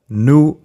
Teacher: it is pronounced as I already said, nous, and its final s is silent